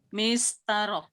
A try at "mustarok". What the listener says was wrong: Itu salah, bukan mistarok. Mustarok ya Bapak Ibu ya. Jadi itu harokatnya salah, bukan kasroh. Mustarok.